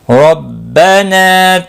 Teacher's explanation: ربنا را زبر کی وجہ سے پور پڑا جائے گا، نا الف مدہ ہے، ایک الف کے برابر کھینچ کر پڑھیں گے، قاف مستعلیہ ہے، پور پڑا جائے گا، لام ساکن کو ہلانا نہیں۔